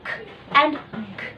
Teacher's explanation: We make the sound k and g. The tongue is in contact with the lower side of the velum, and we call this velar consonant.